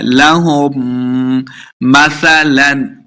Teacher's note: आगे हमजा आ गया तो इजहार का कायदा है, यानी बगैर गुन्ना के पढ़ना है